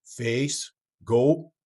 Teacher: A couple of diphthongs that really commonly change for ESL accents, English as a second language, are the A as in face and the O as in goat, going towards A and O, more like a pure A and O. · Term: pure vowels